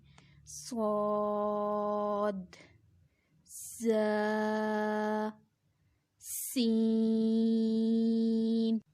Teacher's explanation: इनका मखरिज भी एक ही है, यानी तीनों हुरूफ एक ही जगह से अदा होंगे। ज़ुबान की नोक और दोनों दांतों के अंदरूनी किनारे से अदा होते हैं। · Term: हुरूफ सफ़ीरिया